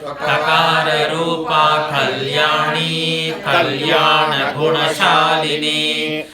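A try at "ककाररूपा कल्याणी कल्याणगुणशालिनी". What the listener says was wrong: Say emphasize the syllables, okay? Because some words like Kalyana etc. are familiar, so don't hurry over them. Syllables are Kalyana. Clarity should be there, okay? Kakararupa Kalyani Kalyana Gunashalini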